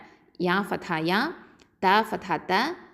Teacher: இந்த யா அப்படிங்கிறது வந்து வசத்துல் லிசான் எழுத்து, நடு நாவு எழுத்து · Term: நுனி நாவு எழுத்து